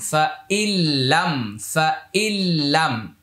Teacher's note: ফা জবর ফা, হামজা লামজের ইল, নুন সাকিনের পরে লাম আসছে, এটা ইদগামি বিলা গুন্না।